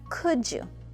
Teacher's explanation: When we use could and you together, we combine the D and the Y to pronounce the J sound